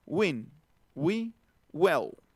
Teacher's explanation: Recuerden, en la W, cerramos un poquito atrás, como si hiciéramos una G, y al mismo tiempo hacemos una B de burro. Pero nada más se tocan tantitito los labios y tantitito atrás en el velo del paladar